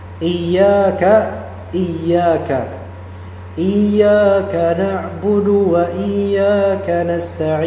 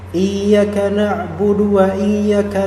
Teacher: ada alif setelah huruf ya ya yang difathahkan yang menjadi mad asli. Mad thabi'i dua harakat.